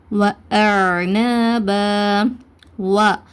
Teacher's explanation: வாவை உச்சரிக்கும் போது உதடுகளை குவிச்சு உச்சரிங்க. உதடுகளை குவிக்கணும் வாவை உச்சரிக்கும் போது. ஸோ உதடுகளை குவிச்சு, வாவுக்கு மேலே ஃபத்ஹா இருக்கிறனால ஃபத்ஹாவை உச்சரிக்கும் போது நம்மளோட வாயை திறக்கணும்.